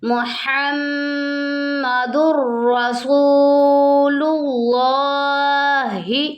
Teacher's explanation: کھینچ کر پڑھا ہے اب لفظ اللہ کا نام آ گیا لفظ اللہ کے نام سے پہلے پیش آ گیا ہے تو اس کو ہم نے رسول اللہ موٹا کر کے پڑھیں گے اور اس لا کو کھڑی زبر کی وجہ سے کھینچ دیں